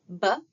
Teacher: bilabial sounds that are made with the lips coming together like pb. We also have the alvear ridge which is the bump behind your two front teeth.